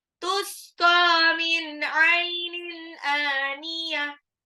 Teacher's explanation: Tusqa, qafnya 2 harokat tuh ya. Min ainin, nun sukun ketemu ain, izhar lagi. Ainin, tanwin ketemu alif, sudah izhar lagi.